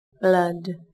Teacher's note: Chúng ta sẽ đọc là A. Từ này đồng thời cũng sẽ có chứa âm cuối D. Chúng ta bật rõ ràng, dứt khoát, rung cuống họng để phân biệt với âm T.